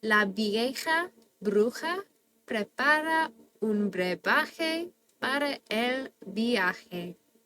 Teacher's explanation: We get to practice V's and B's in Spanish sounding the exact same, as well as different vowel clusters not running together as a diphthong